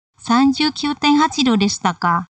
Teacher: ka di situ ini bukan pertanyaan ya, tetapi ini adalah ekspresi terkejut dari si B ya. Jadi diungkapkan dengan nada turun.